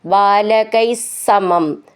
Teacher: വിസർഗ്ഗം ഇല്ലാതെ ചേർത്തു ചൊല്ലുമ്പോൾ സ എന്ന് ഡബിൾ ആയിട്ട് ചൊല്ലണം